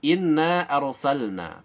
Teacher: perhatikan diawali oleh adanya ghunnah musyaddadah kemudian Hai setelah Guna Kita sempurnakan tiga harokat kemudian kita lanjutkan